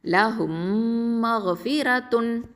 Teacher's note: சுக்குன் செய்யப்பட்ட மீம் அடுத்து ஹரக்கத்து பெற்ற மீம் வரும்போது அந்த மீமோட சுக்குன் செய்யப்பட்ட மீமை இணைச்சு குன்னாவோட ஓதணும். ஓகேவா, அப்போ அந்த ரெண்டாவது மீமில் ஷத்தா இருக்கும். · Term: இதுகாம் ஷஃபவி